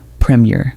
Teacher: Notice the short first syllable and the soft second syllable. That's the British rhythm.